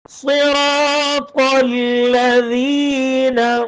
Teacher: الذين میں ذال باریک ہوگا اس میں یہ والی سٹی والی آواز نہیں آئے گی